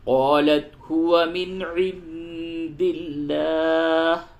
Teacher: نون ساکن کے بعد عین ہے، اس جگہ پہ اظہار ہوگا، اور نون ساکن کے بعد دال ہے، اس جگہ پہ اخفا ہوگا، اور لام کو باریک کر کے پڑھیں گے.